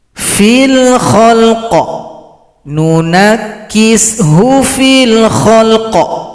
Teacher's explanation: Kalau berhenti pada qaf ini, qafnya disukunkan, berikan bunyi pantulan.